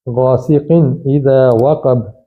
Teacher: تو تنوین کے بعد حمزہ آ گیا ہے تو یہاں اظہار ہوگا